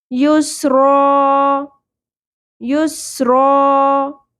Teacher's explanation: سین پہ سیٹی کی آواز کا خیال رکھیں، کلیئر ہونی چاہیے، ثا کی طرح نہیں پڑھنا